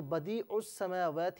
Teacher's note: عین کو سین کے ساتھ ملائیں گے، درمیان میں حمزہ کو حذف کر دیں گے، یعنی حمزہ کو نہیں پڑھا جائے گا۔ اور اگر دونوں کو علیحدہ علیحدہ پڑھیں تو اس سے السماواتی پڑھا جائے گا، اس صورت میں حمزہ پر زبر ہوگا، تو یہ بظاہر الف دکھنے والا حقیقت میں یہ حمزہ ہے۔